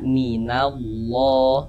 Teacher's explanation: maka lafaz Allah huruf lam jalalahnya itu kita baca tabkhim, kita baca tebal, sehingganya ini kita baca minallah.